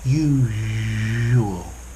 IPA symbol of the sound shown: ʒ